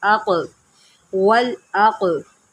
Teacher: क़ाफ के ऊपर जो है क़लक़ला करें